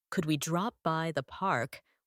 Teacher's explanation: Read a question like, Could we drop by the park with a rising voice at the end?